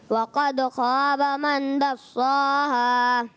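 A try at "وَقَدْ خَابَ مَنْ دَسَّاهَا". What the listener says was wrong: اب انہوں نے غنہ چھوڑ دیا اور اس کے علاوہ جو ہے یہ 10 صاح، دال اور سین موٹا موٹا ہو گیا نا، اس کو باریک رکھنا ہے بیٹا. کیا کرنا ہے اس کو؟ باریک رکھنا.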